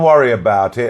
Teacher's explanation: here we add Y between worry and about